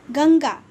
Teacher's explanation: इसके ध्वनि नाक से निकलती है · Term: अनुस्वार